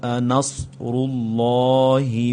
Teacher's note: یہاں پر یہ مد آ رہا ہے اور اس کے بعد را پر پیش ہے، اللہ کا لفظ موٹا کر کے پڑھا جائے گا